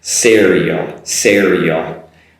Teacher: be careful not to use a she sound